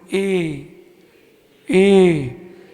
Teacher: जब ए आप बोलोगे तो देखो जीभ पीछे जा रही है, आंख बंद करके देखो, ए और कंठ भी आ रहा है और तालु भी आ रही है, लेकिन जब ओ बोलोगे तो कंठ और ओष्ठ दोनों आएंगे।